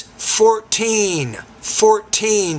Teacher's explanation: So put more stress on the second syllable.